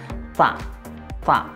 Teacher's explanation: dibacanya agak ada hames, ada kalau bahasa Jawanya ngeses.